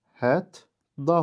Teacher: Hətta sözünün düzgün tələffüzü hət da formasındadır. İkinci samit özünün cingiltili qarşılığı ilə əvəz edilibdir.